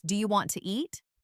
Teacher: Sometimes letters are dropped, like the T in want to. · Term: connected speech